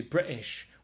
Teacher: it's kind of like swallowing almost like skipping over the t sound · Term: Glottal stop